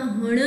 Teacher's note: હણ બોલો ત્યારે તમારી જીભ છે એ મૂર્ધા ભાગને સ્પર્શે છે. કઠોર તાલુ અને કોમલ તાલુ એની વચ્ચે કઠોર તાલુની બાજુમાં મૂર્ધા ભાગ આવેલો છે. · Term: મૂર્ધન્ય અનુનાસિક